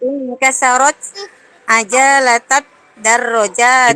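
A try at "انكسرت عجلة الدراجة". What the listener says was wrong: Ini tidak panjang. Inkasarat ajalatat darrojati.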